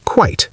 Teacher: One clean syllable with a long I sound at the end.